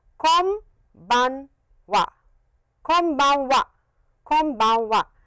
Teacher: close your lips, and it is an M sound